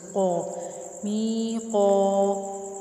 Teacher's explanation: ایک الف کے برابر کھینچیں گے اور موٹا بھی کر کے پڑھیں گے اس کو، قا، می قا۔